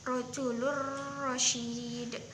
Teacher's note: lam yang diberi harokat domatain itu langsung dimasukkan kepada ro, tetapi membacanya itu tidak berdengung